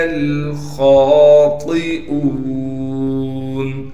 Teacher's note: خا کو موٹا کر کے پڑھیں گے اور خا کو ایک الف کی مقدار کھینچیں گے اس لیے کہ خا پر کڑا زبر ہے۔